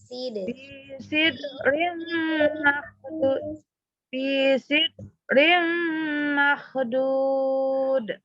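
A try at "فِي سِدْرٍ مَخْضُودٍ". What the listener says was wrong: Jangan ditahan, jangan sidrim, alirkan aja.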